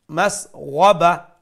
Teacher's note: pronounce the ghain from top of the throat and with a fuller sound